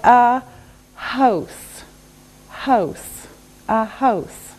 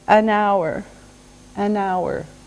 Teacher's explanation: H is a consonant, but sometimes we don't say the H. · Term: silent